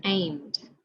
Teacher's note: When our base word ends with a voiced sound, like that causes vibrations in our vocal cords, the suffix ed will also have a voiced sound, as in aimed.